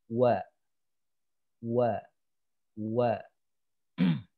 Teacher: huruf wawu ini adalah tempat keluarnya huruf itu dari bibir atas dan bawah yang dimanyunkan.